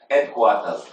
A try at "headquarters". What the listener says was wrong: And headquarters don't start with a fucking H. Headquarters. That's how you're supposed to pronounce it.